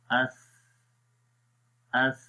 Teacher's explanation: جب ہم اس پڑھیں گے تو دیکھیں آخر میں ہو کیا رہا ہے، سانس جاری رہ رہا ہے۔ اس اس، نرمی کے ساتھ آپ نے پڑھنا ہے اور زبان کی نوک کو ثنایا علیہ کے کناروں پر بھی لگانا ہے۔